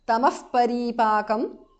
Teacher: Tamaha visarga changes to upadhmaniya.